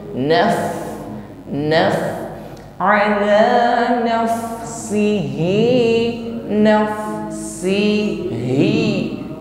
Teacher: Jangan disamakan ketika kita mengucapkan huruf hamzah. Naf, huruf fa sukun menunjukkan ciri khas jaroyanul nafas, ada napas yang mengalir, artikulasinya adalah ujung gigi bertemu bibir bawah, yaitu hams.